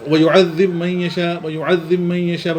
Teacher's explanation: با کا یعذب من کی میم میں، با کا صرف میم میں ہوتا ہے